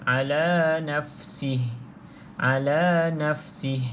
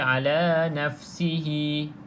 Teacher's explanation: kalau kita berhenti matikan huruf Ha ni Al nafsih Al nafsih jangan baca ala nafsihi jangan baca macam